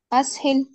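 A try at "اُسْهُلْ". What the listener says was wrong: आपने फिर आपने शायद गौर नहीं किया, हमजा, हमजतुल वसल पर जबर कभी भी, इतने जितने भी सिगा हमने अभी तक बनाए ना, कभी भी हमजतुल वसल पर जबर नहीं आया है। क्योंकि हमने कायदा ये पढ़ा है कि या तो इस पर पेश आता है या कसरा आता है।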